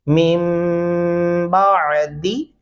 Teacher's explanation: नून छोड़ दिया जाएगा क्योंकि सामने बा है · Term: गुन्ना